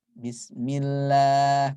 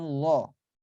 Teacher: Setiap kasrah itu dibaca pasti tipis dia, tarkik jadi lah bukan lo.